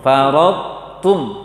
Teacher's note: Baca to yang tebal dulu tanpa qalqalah, tanpa pantulan, kemudian baca huruf ta-nya. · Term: idgham naqis